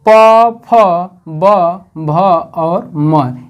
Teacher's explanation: इसके बाद ओष्ठ वर्ण, ओष्ठ वर्ण में जो दोनों ओठों के सहारे उच्चारण किए जाते हैं उन्हें ओष्ठ वर्ण कहते हैं।